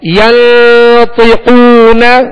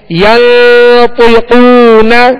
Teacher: طا اور قاف کو پر کرنا ہے، حروف مستعلیہ میں سے ہے